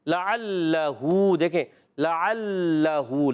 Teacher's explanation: عین ادا ہوتا ہے حلق کے درمیان والے حصے سے